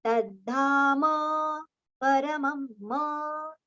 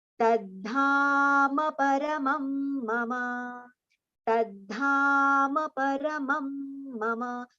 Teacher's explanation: So dha we have to prolong, and then ma paramam we have to take it together. So there should not be any gap or pause between ma and pa. So tadhama paramam mama.